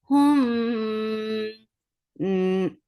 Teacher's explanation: This is ikhfa shafawi. You're keeping the sound in your nose.